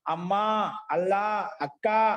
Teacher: దూరంగా ఉండే వాళ్ళని సంబోధించి పిలిచేటప్పుడు ఆ స్వరం అంతా ఉంటే ఒకే శృతిలో ఉంటుంది. దాంట్లో ఉదాత్త స్వరం, అనుదాత్త స్వరం ఉండవట. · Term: ఏకశృతి